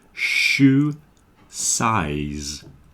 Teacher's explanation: Shoe begins with a sh, shoe. And then size begins with s, finishes with z. Shoe size. 3 different consonant sounds there.